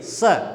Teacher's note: इसके उच्चारण में जीभ नीचे वाले दांतों को स्पर्श करनी चाहिए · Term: दंत्य वर्ण